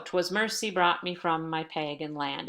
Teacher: "'Twas mercy brought me from my pagan land." That's iambic pentameter, which simply means that there are 5 iambs, or units of rhythm, and iamb meaning one unstressed and one stressed syllable